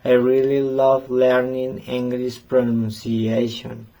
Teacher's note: the word love is stressed because it expresses the main idea and emotion of the sentence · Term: word stress